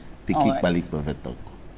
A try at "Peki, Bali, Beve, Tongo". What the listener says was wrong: Beve, Tongo. These are different areas. So the way you said Peki, Bali, Beve, it sounded like one town.